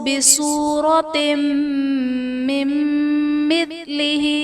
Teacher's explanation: یہاں ادغام مع الغنہ کا قاعدہ ہوگا، یعنی تنوین میں ہم غنہ کر کے پڑھیں گے۔